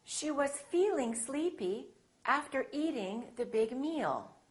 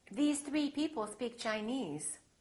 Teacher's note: every example in the following sentences has the tense vowel e